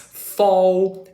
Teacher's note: if you use your bottom lip and the front teeth, maybe you're gonna have something as fall